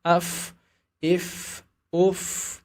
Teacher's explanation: huruf fa bisa disamakan dengan huruf F dengan memastikan sifat hamsnya